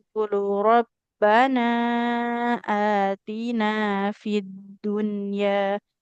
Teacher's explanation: kalau nun bertasid harus ditahan lebih lama ya